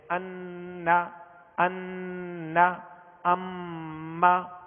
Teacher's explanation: ناک میں آواز لے جا کر ایک الف کی مقدار اسے ٹھہرائیں گے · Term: غنہ